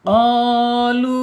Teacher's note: ketika diucapkan qaf mad dan lam mad ini, maka masuknya di al-jaub saja ya, al-jaub ya, tidak boleh masuk ke rongga hidung. Al-jaub itu rongga mulut ya, rongga mulut saja.